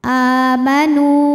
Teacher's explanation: nu hukumnya adalah mad tabi'i dhahiri karena ada waw sukun didahului baris dhammah, maka huruf nun panjang 2 harokat.